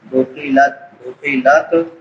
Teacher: تا پہ قلقلہ نہیں کریں گے